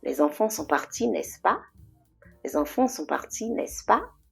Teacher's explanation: the last syllable has a higher pitch. It goes up.